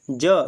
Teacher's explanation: ज ये तालु से बोला जा रहा है।